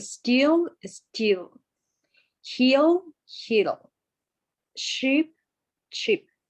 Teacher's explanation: the E sound is tense. Okay, it should tire your mouth a little bit